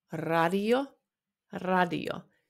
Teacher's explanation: In Finnish, R, you can roll it a little bit more, but it's also okay if you say like radio or radio.